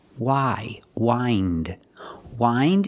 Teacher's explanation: we hear the pronunciation with the long I for the present verb